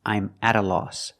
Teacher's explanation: The T is pronounced like a fast D because it's between vowels.